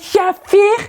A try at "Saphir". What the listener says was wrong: Tu l'as prononcé Shafir.